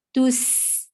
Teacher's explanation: seen will get safid very clearly. And it should be a snaky sound, not honeybee sound. Tus, is short.